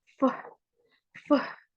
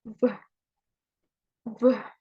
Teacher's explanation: F and V sound are pronounced in the labial area. F is voiceless.